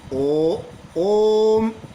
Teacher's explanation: करके आवाज देते हैं जैसे कि आप आवाज दो ओ ओम तो ओम जब उच्चारण कर रहे हो तो ओम में जो ओ की ध्वनि निकलती है थोड़ा लंबा निकलती है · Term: प्लूट स्वर